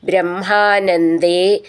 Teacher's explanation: ബ്രഹ്മ എന്നുള്ളതിൻ്റെ ഉച്ചാരണം ശ്രദ്ധിച്ചോളൂ, മാഹ എന്ന് വരണം